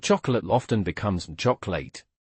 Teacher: the middle O is often omitted. It's a very common form of illision.